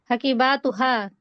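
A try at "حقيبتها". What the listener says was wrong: হাকিবাতুহা, হাকিবাতুহা টান হবে না। হ্যাঁ, আপনি বার মধ্যে টান দিয়ে দিয়েছিলেন।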